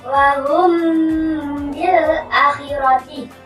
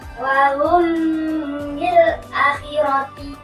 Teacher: Hak syafawi adalah apabila ada mim sukun bertemu huruf ba. Cara membacanya, membunyikan antara huruf mim dengan huruf ba.